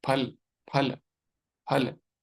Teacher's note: अगर हिंदी या संस्कृत वाला बोलना है तो दोनों होठों को मिलाना पड़ेगा। फल फल फल ऐसे बोलना पड़ेगा।